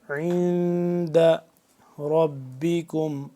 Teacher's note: یہاں پہ آ گیا ہے نون ساکن, یہاں پہ ہم اس کو اخفا کریں گے, یعنی کہ آواز کو ناک کے اندر لے جا کر پڑھیں گے